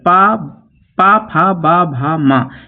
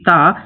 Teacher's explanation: पा फा बा भा मा ये तीनों ओष्ठ वर्ण है, जबकि ता दंत वर्ण है